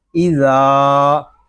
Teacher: ذال کو ہم ایک الف تک کھینچ کر پڑھیں گے کیونکہ یہاں پہ الف مدہ ہو رہا ہے